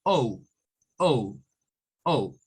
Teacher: Pero la idea es que esto nos está queriendo decir que cuando veamos esto, es que esa O suena a O, es decir, a una mezcla entre O y U, como decir la O y la U al mismo tiempo.